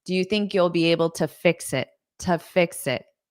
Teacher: You'll be able to fix it. But because this is a preposition and there's a next word, it's going to be unstressed to